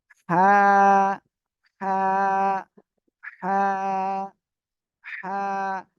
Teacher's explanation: আমরা হলক মানে কলা কলার মধ্যখানে একটু চেপে ধরবো ঠিক আছে হলকের মধ্যখান হইতে হা অক্ষরটি উচ্চারণ হয় · এই যে এইটুকু হলো গলা, তাই না? গলা চেপে হালকা বাতাস বের করে, মুখ দিয়ে হালকা বাতাস বের করে উচ্চারণ করবেন।